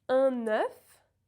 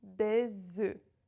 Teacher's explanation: When it's singular you have the open E and the F is pronounced F. In the plural you have the closed E and the F is silent.